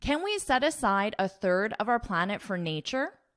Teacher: So I'm going to read this again and notice how my inflection rises, so my voice is higher at the very end of this word because it's a question.